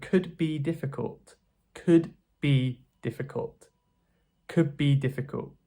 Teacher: So D becomes B in some cases.